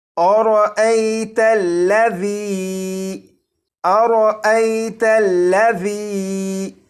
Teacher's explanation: اس را کے اوپر زبر ہے، اس لیے اس را کو پور یعنی موٹا پڑھیں گے۔ یہاں پر ذال ہے، اس ذال کو نرمی سے پڑھیں گے، یعنی سیٹی کی آواز کے بغیر پڑھیں گے۔